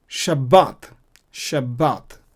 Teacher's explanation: it receives a dages and usually pronounced be instead of we right Beth is not wet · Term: strong dages